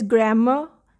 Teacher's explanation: r gets silent after the vowel in british english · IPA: ə